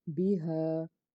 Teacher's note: اگر ہم اس کو سٹاپ کرتے ہیں تو دو زبر کو ختم کر کے ایک الف کے برابر کھینچیں گے، بھی ہا۔